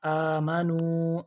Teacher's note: अब आमनू के ऊपर भी आपको मद नज़र आ रही है, इसको भी 3 अलिफ के बराबर लंबा करना है।